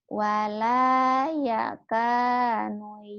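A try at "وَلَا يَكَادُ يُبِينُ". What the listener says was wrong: kado. Ya kok ya kanu. Ya kado.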